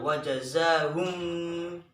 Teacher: Kemudian bima itu dibaca ihfa syafawi karena mim mati bertemu dengan ba, itu dibaca mendengung